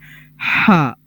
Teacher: جو جیم والا ہا، حلوے والا، اس کو ہم ادا کرتے ہیں حلق کے درمیان سے، بالکل حلق کے درمیان سے ہم ادا کرتے ہیں ہا.